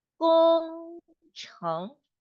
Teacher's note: 工程 is first tone and second tone